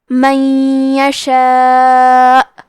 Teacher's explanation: یہ مد واجب متصل ہے، تو ہم اپنی آواز 4 مد کے برابر لمبی کریں گے · کلمت من کے آخری میں نون ساکن ہے، پھر حرف الیا آتا ہے۔ کلمت یشاء یا حروف الادغام بغنہ میں سے ہے، تو ہم یہ حکم کو غنہ کے ساتھ ادا کریں گے